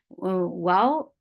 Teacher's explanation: makhraj of wow is circling lips, fatha open jaws.